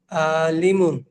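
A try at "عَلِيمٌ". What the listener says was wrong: আলিমুন না, আলী। আতে টান নেই, লিতে টান আছে। আলিমুন।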